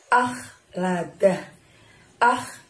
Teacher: kita mengeluarkan hurufnya dari tenggorokan bagian ujung yang dekat dengan lidah kita ah Hai seperti batuara ngorok apabila orang sedang tidur ya Ah